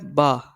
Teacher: با جو ہے اس کو ایک انگلی کے برابر کھینچ کے پڑھا جاتا ہے، یہ بھی ہونٹوں کی مدد سے ادا ہوتا ہے